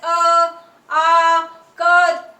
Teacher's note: तो देखिए आवाज कहाँ से आ रही है? कंठ से आ रही है इसकी ध्वनि